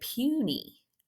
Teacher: this y happens to sound like a long e because it's in a multi-syllabic word